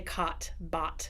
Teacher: we say cot, bought, and it's very, it's very flat and very wide. But in, you know, standard American, bought, caught, all of those words that are often spelled uh, a u ght or o u gt, uh, that's open o.